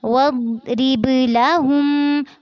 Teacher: लाहुम में हा को मीम से मिलाते हुए मीम मुशद्दद पर गुन्ना करना है